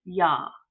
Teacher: You're going to sneak the Y sound in front of that ah sound, okay? So we're going from ah to ya.